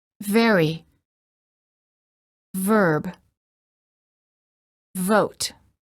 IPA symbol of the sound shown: v